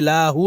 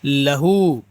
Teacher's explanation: لام پر زبر ہے تو کھینچنا نہیں ہے، لاہو نہیں کرنا ہے، لہو.